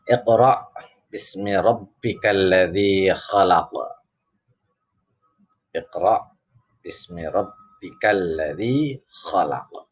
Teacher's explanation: Ra-nya berharokat fathah, ini disebut dengan ra tafkhim, ra yang dibaca tebal